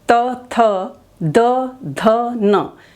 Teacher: और स्पेशली ऊपर के दांत से, जैसे त, ऊपर के दांत का जो अंदर वाला हिस्सा है, त, थ, दंत से यहाँ तात्पर्य है केवल क्या है, केवल ऊपर के दांत से है